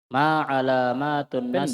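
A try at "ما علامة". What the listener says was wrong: Pendek. Ini alamah ini, mimnya jangan dibaca panjang. Kapan dibaca panjang? Jama jadinya.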